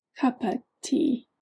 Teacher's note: In English, a cup of tea, the of almost disappears and turns into what is called the schwa